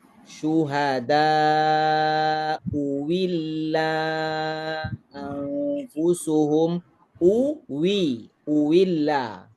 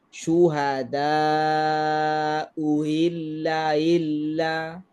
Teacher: Kalau ibdalkan dengan waw. Syuhada uwilla anfusuhum uwilla. Itu ibdal. Kalau tashil syuhada uhilla illa. Itu tashil.